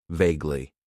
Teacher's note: Then we have an adverb that I like to use, and that is vaguely. It has 2 syllables, and the stress is on that first syllable.